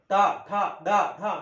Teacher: जीभ मुरडूनच यांचा उच्चारण होते म्हणून यांना आपण काय म्हणतो मृधन्य वर्ण म्हणतो · मूर्धा बरोबर सेंटरला, जिभेच्या वरती बरोबर सेंटरला मूर्धा आहे. त्या मूर्धेतूनच यांची उच्चारणा होते. जीभ मुरडते. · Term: मूर्धन्य वर्ण